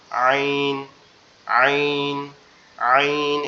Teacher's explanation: এটা একটু গলাটা চাপা আওয়াজ হবে, ঠিক আছে, গলাটা একটু চেপে মানে একটু শক্ত করে বলতে হবে